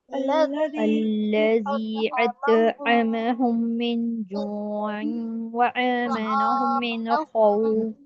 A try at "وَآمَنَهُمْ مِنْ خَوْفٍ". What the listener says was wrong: دیکھیے مجھے آواز آئی وآمنہم، یہاں حمزہ کی ادائیگی کرنا ہے، ٹھیک ہے، عین کی نہیں کرنا. یہی چیز ہمیں فرق سمجھنا ہے کہ حمزہ کی جگہ عین اور عین کی جگہ حمزہ کی ادائیگی نہیں ہو، تا کی جگہ تو اور تو کی جگہ تا کی ادائیگی نہیں ہو.